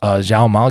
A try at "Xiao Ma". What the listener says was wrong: You're pronouncing Zhao Ma like how Westerners pronounce the letter Z. Excuse me, how they pronounce the letter X. Try to pronounce the X like an S. Pronounce the X like an S.